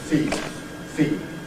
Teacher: the likely devoicing of the /d/ in ‘feed’ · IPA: [fiːd̥]